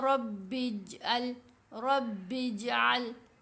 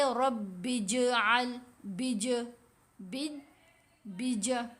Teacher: با کو جب جیم سے ملانا ہے، جیم کی آواز بہت نمایاں ہونی چاہیے، آواز باؤنسی سی، ہلتی ہوئی آواز، سمودھ نہیں رہے گی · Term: قلقلہ